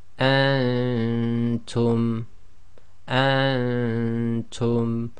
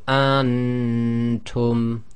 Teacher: The noon shouldn't be clear, and that's caused by keeping your tongue in the position of the next letter. Or if you find that very difficult, try to just make sure your tongue is away from the roof of your mouth, so it doesn't actually touch the roof of your mouth.